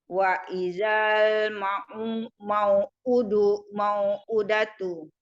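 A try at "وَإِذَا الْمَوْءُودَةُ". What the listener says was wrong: U-nya panjang.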